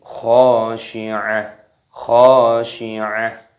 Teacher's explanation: Idhar itu artinya jelas, halqi artinya tenggorokan, karena termasuk kha itu adalah huruf yang keluar dari tenggorokan. Dibaca jelas, tidak boleh dengung. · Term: idhar halqi